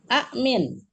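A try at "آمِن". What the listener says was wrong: Panjang lagi. Amin. Kan A itu udah Bu Alona uraikan jadi kan A-nya Amin.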